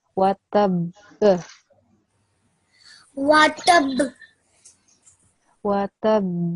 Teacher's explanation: So you need to do qalqala on the ba because you're pausing as well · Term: hard qalqala